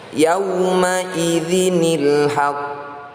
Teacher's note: Karena ada tashdid, maka pantulan harus ditahan terlebih dahulu. Ditahan hanya sekitar satu hingga dua ketukan.